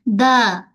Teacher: Ujung lidah dalam Arab menyentuh pada belakang pangkal gigi atas.